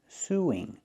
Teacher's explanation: Link the vowels with the w sound